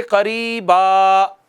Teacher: 2 زبر میں سے ایک زبر اڑ جاتی ہے، زبر پلس الف پڑھا جاتا ہے